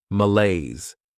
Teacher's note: This word has 2 syllables, and the stress is on that second syllable, malaise. This is not a great noun.